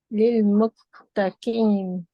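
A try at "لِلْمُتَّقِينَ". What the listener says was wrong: Okay, now press this too. Press this word. Don't say key. Say lil muttaqina. When you for this qaf, wherever you're saying that, just go a little back in your throat.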